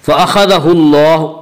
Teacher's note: अल्लाह के लाम को पुर पढ़ेंगे। इसका कायदा यह है कि अल्लाह के लाम से पहले ज़बर और पेश आए तो अल्लाह के लाम को पुर पढ़ेंगे।